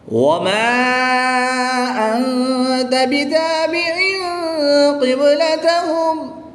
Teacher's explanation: الف مدہ کے بعد حمزہ دوسرے کلمے میں آ گیا تو یہاں پر مد منفصل ہوگی. 2 سے 3 الف تک کھینچ کر پڑھیں گے